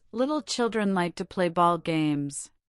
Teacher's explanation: This sentence contains both the initial light L and the final dark L